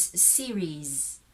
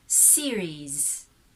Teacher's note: the last sound, the S there in the spelling, that's a Z.